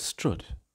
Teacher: you can think of the strut vowel as a realization of a stressed schwa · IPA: ʌ